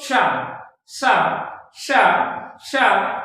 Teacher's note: तो कहां से हमारी जीवा किसको स्पर्श कर रही है? तालु को स्पर्श कर रही है। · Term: तालव्य वर्ण